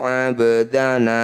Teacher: Qalqalah artinya memantul sugro artinya kecil pantulan ba kecil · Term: qolqalah sugro